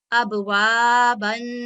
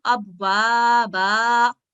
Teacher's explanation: اگر فتح تنوین ہوگی تو وہ فتح اشباعیہ میں تبدیل ہو جائے گی جب ہم اس کو وقف کریں گے